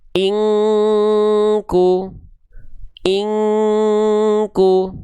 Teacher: Kalau ketemu sama qof dan kaf baru dia eng seperti eng kuat ya · Yang penting samar dulu aja bunyi n-nya ditahan dua harakat. · nun sukunnya ketemu sama huruf kaf. Berarti dia mendekati dengungannya kuat. Ya, maka dia dibaca itu harus kuat dengungannya masuk ke hidung. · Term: ikhfa